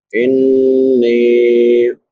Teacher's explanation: نون مشدد ہے، شد والا نون، اس پہ غنہ ہوتا ہے. غنہ آواز کو ناک میں چھپا کر ادا کرنا، ایک الف کی مقدار کے برابر.